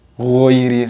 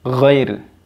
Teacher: don't round your lip like O, غَيْرِل, no, it is fathah, not O